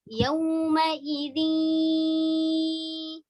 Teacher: Ada 4 huruf idgham bigunnah, yaitu ya, wa, mim, nun. Nah, ya ini termasuk idgham bigunnah karena langsung didengungkan ke huruf ya, namun ada dengungnya. Dengungnya itu berarti ada nun yang harus terdengar.